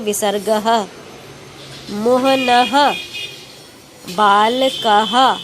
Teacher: जैसे अब देखिए यहाँ पे अगर संस्कृत है इसलिए यहाँ पे दो विसर्ग लगे, ये पढ़ेंगे हम मोहनः। जो विसर्ग है इसकी आवाज़ हमारे मुंह से हा के रूप में निकलती है